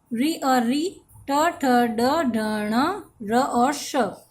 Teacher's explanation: ये सभी वर्ण मूर्धा से बोले जाते हैं, अतः इन्हें मूर्धन्य वर्ण कहते हैं